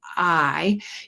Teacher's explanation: when you start saying i your mouth is in the same open low open position as it is for ah and uh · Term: long vowel sound